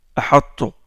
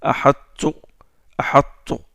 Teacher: Il est grossi, il est emphatisé un peu le ta. Il est proche du ta. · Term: idgham al-naqis